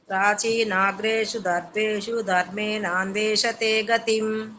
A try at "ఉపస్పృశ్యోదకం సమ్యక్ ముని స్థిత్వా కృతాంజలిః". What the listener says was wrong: ఆ మధ్యలో లేని దీర్ఘాలు చెప్పకండి అమ్మా.